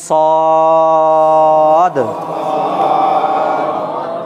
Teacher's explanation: জিভের আগা নিচের দাঁতের আগায় লাগবে, উচ্চারণটাকে লম্বা করতে হবে, সর্বশেষে একটা দয়ে হসন্তর উচ্চারণ আনতে হবে।